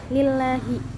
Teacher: lam tarqiq, yaitu lam yang tipis karena pakainya kasroh